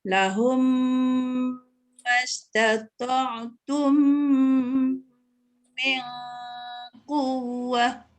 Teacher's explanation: Yang idgham syafawi ni dia satu je ya, mim mati bertemu dengan mim. Kena dengung.